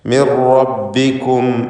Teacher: മിർ റബ്ബിക്കും റാ തഫ്ഖീം ചെയ്യണം. ഷദ്ദുള്ള റ ആണ്. തക്രീർ കൂടുതൽ വരാതെ സൂക്ഷിക്കുകയും വേണം.